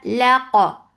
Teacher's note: Keep lam light but qaf heavy and it will get sip of qalqala.